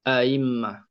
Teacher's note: Lepas tu kita jumpa kalimah a'immah. Kalimah a'immah ni panggil berhimpun dua hamzah dalam satu kalimah. Jadi kena tashil. A'immah tashil.